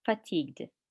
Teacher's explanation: the stress is here on the second part fatigued